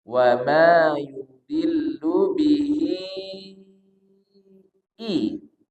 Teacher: Bihi di sini panjangnya 4 harokat. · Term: panjang 4